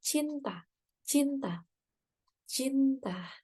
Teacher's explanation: Bunyi C merupakan konsonan dorsopalatal tak bersuara. · lepaskan lidah tersebut dengan cepat sehingga udara melewati celah antara lidah dan langit-langit keras untuk menghasilkan bunyi C